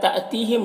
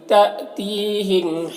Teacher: حمزہ ساکنہ جھٹکا لگے گا، تی میں یا مدہ ہے، میم میں اظہار شفوی ہو رہا۔